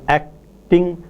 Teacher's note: in the word acting, for the plosive k, there is no release as the articulators move from the production of k to t. T, however, is released.